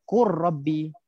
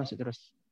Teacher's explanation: Lam ni hilang terus. Terus masuk pada ra.